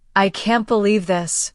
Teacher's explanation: If you say, I can't believe this, with a downward tone, it may show disappointment. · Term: intonation